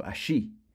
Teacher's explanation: if we were in Uruguay or Argentina, remember the double L sound is pronounced sh, so allí. But for the rest of the Spanish speakers, allí.